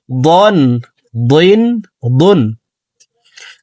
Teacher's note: দ হরফকে মোটা করে উচ্চারণ করব